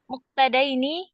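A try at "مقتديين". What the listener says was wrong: Ini muqtadiyaini, salah ini ya. Ini soalnya kurang ianya ya. Atau mungkin ianya juga bisa digabungkan kepada ya yang sebelumnya muqtadiyan gitu ya. Muqtadiyan ya.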